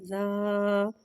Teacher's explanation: زال نرمی والا حرف ہے، لہذا اس میں سیٹھی نہیں آئے گی، اس کو نرمی سے معروف پڑھیں گے